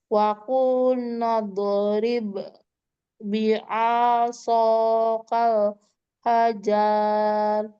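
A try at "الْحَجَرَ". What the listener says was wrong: Nggak panjang ya.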